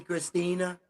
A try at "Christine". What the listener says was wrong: Christine? Christine, yeah.